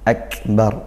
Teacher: kaf sukun ditekan kemudian didesiskan